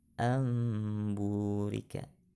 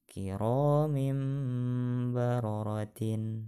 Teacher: memalingkan bacaan nun mati dan tanwin menjadi Bunyi bacaan mim disertai dengan dengung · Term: iqlab